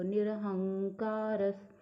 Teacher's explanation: र के बाद जो विसर्ग है उसको ह या हा नहीं बोलेंगे, क्योंकि वो अंत में नहीं है